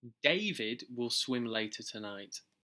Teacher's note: Here the speaker is emphasising who will go swimming. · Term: sentence stress